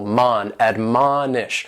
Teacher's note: admonish has 3 syllables and the stress is on that second syllable